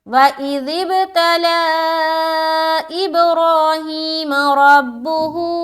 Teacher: ذال کو بہت ہی نرمی کے ساتھ ادا کرنا ہے، بغیر سیٹی کے ادا کرنا ہے